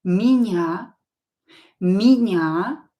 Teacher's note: Not stress, pronounce it as и.